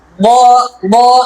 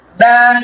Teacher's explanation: বদ হরফটা উচ্চারণ করার সময় মুখটা ভরে আওয়াজ হবে। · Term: মোটা